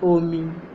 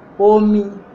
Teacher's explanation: Omi, the rising tone, that one is water. Omi, the falling tone, that one is the first person pronoun